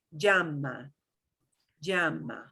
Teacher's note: you will hear a little teeny tiny teeny tiny j with a yu sound